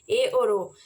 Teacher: मुख आधा बंद इनमें जब यह बोलेंगे तो मुख आधा बंद रहेगा